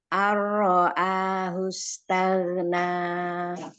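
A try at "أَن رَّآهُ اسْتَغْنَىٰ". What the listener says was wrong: Nah, rohnya harusnya nggak main tuh bibirnya.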